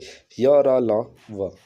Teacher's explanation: जिन व्यंजनों के उच्चारण करते समय मुख बहुत सुकंचित जाता है, फिर भी वायु स्वर के भांति बीच से निकल जाती है, उस समय उत्पन्न होने वाली ध्वनि अंतस्थ व्यंजन कहलाती है।